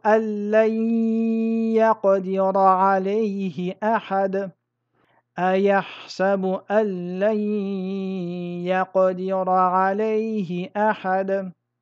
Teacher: dans le premier, j'ai fusionné le nun dans le lam sans runna. J'ai simplement mis une shadda sur le lam. J'ai prononcé la lettre doublement. Dans le deuxième, j'ai fusionné le nun dans le ya en respectant la runna et en mettant une shadda sur le ya. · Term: idramun bi runna, idramun bi ghayri runna